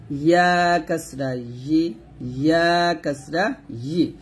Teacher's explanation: জিহ্বার মধ্যখানটা উপর তলার সঙ্গে লাগিয়ে বলবেন